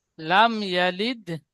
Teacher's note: তো এখানে মিম মিমের সাকিনের পরে বা এবং মিম ছাড়া অন্য অক্ষর ইয়া এসেছে, তাই মিমকে বিনা গুন্না জাহির করে পড়তে হবে। একে ইজহারে সাফাবি বলে।